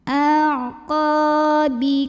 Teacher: qa mad dhabi'i karena ada alif yang didahului fathah, maka dipanjangkan qafnya 2 harokat